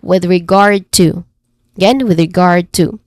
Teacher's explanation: The stressed syllable here is the second syllable, guard.